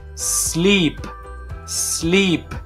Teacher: la s antes de una consonante no suena nunca con una e solamente hacemos el salir el aire de nuestra boca para que esa s pueda sonar correctamente sleep sleep en pasado